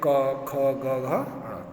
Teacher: देखिए ये भी आता है उच्चारण स्थान। कंठ, कंठ से बोले जाने का इन्हें कंठवर्ण कहते हैं। कंठ मीन्स गला।